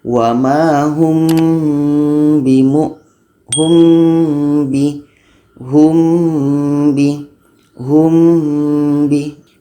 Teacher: Ikhfa Syafawi dibaca dengung dua harkat wamahum Bimo home bihung be home by pastikan kita baca dengung